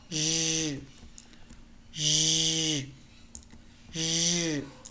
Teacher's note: Exactly like sh, but voiced. Sh, zh, sh, zh, sh, zh.